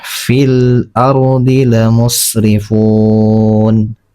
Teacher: Kalau qiraat Imam Asim itu dia membaca mad arid li sukun itu dia 4 harokat.